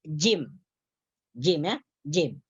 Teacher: huruf yang keluar dari pada pertengahan lisan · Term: huruf Jim